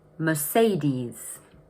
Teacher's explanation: Notice that the stress is in the middle of the word and the ending is a long E sound.